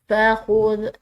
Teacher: ذال نرم حروف میں سے ہے، اس میں کسی قسم کی سیٹی کی آواز نہیں ہوگی